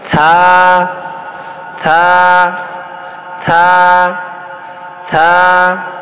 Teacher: থা হচ্ছে উপরের দুই দাঁত জিহ্বার আগায় লাগাবো।